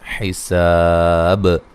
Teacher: الحساب، سین کو باریک سیٹی سے، سا الف مدہ ہے، وقفاً بڑی مد کے ساتھ وقف کر سکتے ہیں اور با پہ قلقلہ کریں گے، وقف کی صورت میں قلقلہ کو واضح کریں گے